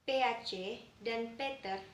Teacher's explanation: pengucapan suatu bunyi yang disertai dengan hembusan keluarnya udara dengan keras, sehingga terdengar bunyi H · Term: Aspirasi